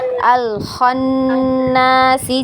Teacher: Didengung nun ini huruf na ya, huruf nun yang bertasydid ya, itu wajib digunnah ya. Jadi ditahan gunnahnya.